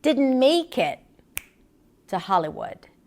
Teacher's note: falling intonation and going all the way down in her pitch on the word Hollywood